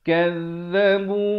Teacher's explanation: Yang betulnya za di hujung lidah.